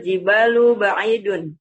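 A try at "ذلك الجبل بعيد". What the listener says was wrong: Bukan jibalu, perhatikan. Ini ba-nya tidak panjang. Dalikal Bukan jibalu. Kalau jibalu begini tulisannya. Lihat nih, kalau jibalu. Iya, kalau jibalu kan gini tulisannya ya. Jibal ada alif. Nah, jibal. Kalau ini yang tidak ada alifnya begini berarti jabal. Itu bedanya ya.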